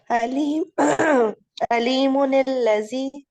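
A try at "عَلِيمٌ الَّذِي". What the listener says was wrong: दाल को बारीक करें। इसमें सीटी नहीं आएगी।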